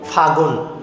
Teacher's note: রূপান্তরিত বা পরিবর্তিত শব্দে শুধু কিন্তু গ আছে, লটা কিন্তু হারায় গেছে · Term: অন্তর্হতি